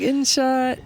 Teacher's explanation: It's about her sibilants. She doesn't do S's. She does shushes.